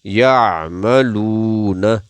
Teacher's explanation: لام کو بھی کھینچیں گے کیونکہ آگے واو ہے یعملون ایک الف یعنی ایک سیکنڈ کے بعد جتنا ایک سیکنڈ